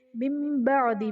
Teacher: نون ساکن کو میم سے بدل کر اخفا کریں گے یعنی غنہ کر کے پڑھیں گے تو یہاں پر اقلاب کا قاعدہ ہوگا.